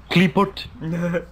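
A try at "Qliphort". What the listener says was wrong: Kleeput. Kleeport. Yeah, Q-L-I makes the, apparently makes the Klee sound, so it'd be Kleeport instead of Kleeput.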